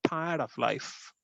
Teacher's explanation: Here we have 4 syllables. Unstressed. Stressed, unstressed, and stressed.